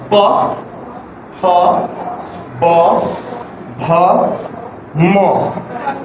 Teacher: এইগুলো সব ঠোঁটে ঠোঁটে মিলে